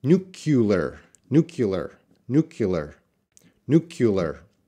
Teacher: they're putting in the extra schwa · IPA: /ˈnjuːkəlɪər/